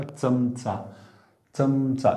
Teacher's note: जिभेचा शेंडा बघा दाताच्या नंतरच्या भागाला लागला पाहिजे